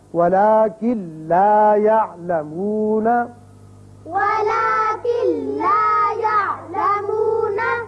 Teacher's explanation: اب کن لا نہیں پڑھیں گے بلکہ کاف سیدھا لام سے ملے گا، نون کی آواز پیدا یہاں نہیں ہوگی، یعنی غنہ نہیں ہوگا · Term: ادغام بغیر غنہ